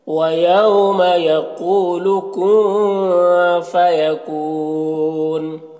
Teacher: قاف کو پر پڑھیں گے، اور یہاں پر واو مدہ ہے، ایک الف کے برابر کھینچیں گے · نون کی آواز کو ناک میں چھپا کر پڑھیں گے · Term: اخفا